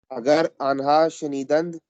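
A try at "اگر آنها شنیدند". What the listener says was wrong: शू नहीं पढ़े, शे शेनिदन। शेनीदन शेनीदन, अगर आन्हा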